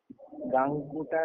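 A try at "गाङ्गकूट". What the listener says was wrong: अरे राम राम राम, गांगकूटा कहाँ है? वहाँ कूट है, अट थोड़ी ना है। तुमको कूट देना पड़ेगा। जी जी जी कूट देना पड़ेगा।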